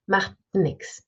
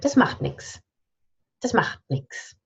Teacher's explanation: And again, we swallow the T.